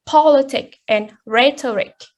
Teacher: Politics and rhetoric. Their endings of the words is ik, but the stress falls on the first syllable